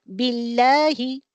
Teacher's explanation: बिल्लाहि पढ़ती हैं पतली आवाज में, ओके, नीचे के जबड़े को नीचे उतार कर